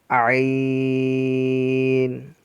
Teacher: عین بھی حرف حلق کے درمیان سے ادا کیا جاتا ہے